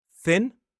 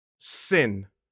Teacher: It is the th sound, like the unvoiced th sound where we put the tip of our tongue on our top teeth, and the s sound.